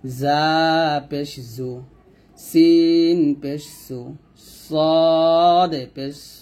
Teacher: জা সিন সদ তিনটি অক্ষর আমরা জিহ্বার আগা নিচে দাঁতের সামনে নিচে দাঁতের মাঝে লাগিয়ে তিনটি অক্ষর উচ্চারণ করব